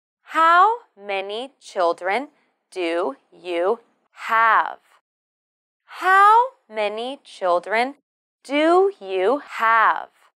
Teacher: For this question, we stress the words how many, children, and have. And we use the falling tone.